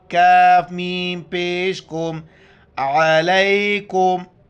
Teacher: کاف کو باریک کر کے اس میم کے ساتھ ملائیں گے